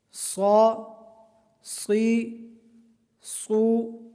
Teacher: صاد حروف مستعلیہ میں سے ہے، اس کو پر پڑھیں گے اور سیٹی کی طرح آواز نکالیں گے کیونکہ یہ حروف صفیریہ میں سے بھی ہے۔